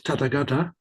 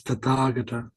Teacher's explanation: Notice that it's not tatagata like some would say, but that there's a long a on the second second vowel. So it's tataga.